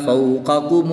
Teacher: قاف بھی حرف مستعلیہ میں سے ہے تو اس کو بھی پوری یعنی موٹا پڑھیں گے۔ اور را کے اوپر زبر ہے تو اس لیے را پر پڑھی جائے گی۔